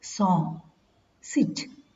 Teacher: s, song, sit, voiceless alveolar fricative